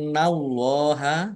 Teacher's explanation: nun tasdid dibaca gunnah atau mendengung ditahan biar tampak dengungannya. Allahnya dibaca tebal karena harokat di depannya fathah.